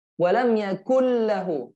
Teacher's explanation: Noon. The noon entering lam. So we read the lam only. This is merging without gunna.